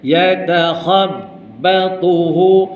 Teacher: ya nipis, ta nipis, kha tebal